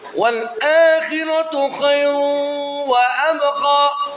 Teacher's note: Di situ ada idgham bi guna. Khairun menjadi khairu, lucu ya. Masuk ke wawu tasdid.